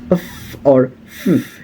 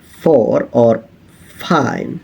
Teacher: The lower lip making contact with the upper teeth. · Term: labiodental